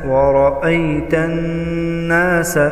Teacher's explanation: नून मुशद्दद पर हमेशा गुन्ना होगा।